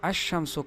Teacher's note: جیسے آپ مثال میں دیکھ لیں الشمس، یہاں اسم کی ابتدا میں الف لام آیا ہے اور الف لام کے لام کے بعد شین آیا ہے جو کہ حروف قمریہ ابغ حجک و خف عقیمہ ان میں سے شین نہیں، لہٰذا یہاں لام کو آنے والے حرف یعنی شین میں مدغم کیا جائے گا